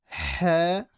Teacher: Ha, from the middle of the throat